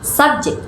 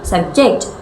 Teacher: subject with stress on the first syllable is a noun and subject with stress on the second syllable is a verb